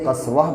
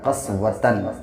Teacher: وَأَشَدُّ قَسْوَةً، تو یہ جب وقف کی حالت میں یعنی جب رکتے ہیں تو یہ تا ہا بن جاتا ہے